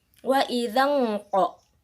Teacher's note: Untuk ayat ini ada hukum nun sukun atau tanwin, yaitu wa idzan qa, yang dimana hukumnya adalah ikhfa haqiqi, bacanya samar-samar